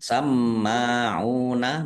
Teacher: Sama'una mim tasdid dibaca runah atau mendengung ditahan biar tampak mendengungnya. Sama'una mim fathah alif mim fathah berdiri mat tabi'i ain dhammah wawu sukun juga mat tabi'i dibaca panjang dua harokat.